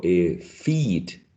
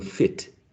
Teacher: Pero en inglés, si yo digo feed y digo fit, en la primera palabra el sonido es más largo, ¿cierto? En la segunda palabra el sonido es más corto.